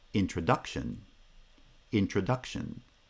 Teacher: the second foot is the strong foot